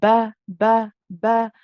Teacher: the ba is a letter of the lips where the 2 lips come together. We say ba, and then we're joining with the ya, which is also rakhawa, so we can run the ya.